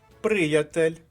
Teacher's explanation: наголос падає на першому складі